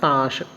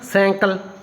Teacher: ਮਲਵਈ ਦੇ ਵਿੱਚ ਨਾਸਿਕਤਾ ਦੀ ਮਾਤਰਾ ਜਿਹੜੀ ਹੈ ਮਾਝੀ ਨਾਲੋਂ ਕੀ ਦੇਖੀ ਜਾਂਦੀ ਹੈ ਵਧੇਰੇ ਦੇਖੀ ਜਾਂਦੀ ਹੈ